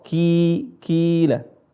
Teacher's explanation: ini dibaca panjang Karena ada Ya Sukun sebelumnya adalah huruf yang berharakat kasrah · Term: huruf mad